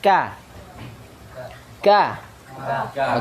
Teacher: pangkal lidah Oh tapi pangkal lidah maju sedikit kah terasa itu pangkal lidah tapi dimajukan sedikit tempat keluarnya ditempelkan di langit-langit atas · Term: huruf Kaf